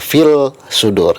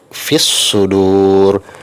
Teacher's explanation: Jadi kesimpulannya agar mudah diingat bahwa alif lam qamariyah saat dibaca huruf lamnya masih jelas, sedangkan alif lam syamsiah saat dibaca huruf lamnya hilang, seolah-olah hilang atau tidak terdengar · ketika dibaca bunyi lamnya tidak terdengar lagi. Tulisannya tetap ada, tapi ketika dibaca bunyi lamnya sudah tidak terdengar lagi.